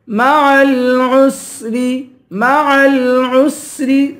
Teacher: سین کی سیٹی نکالیں گے